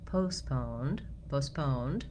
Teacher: We have a short first syllable, but we don't reduce the vowel. We keep it as the diphthong O.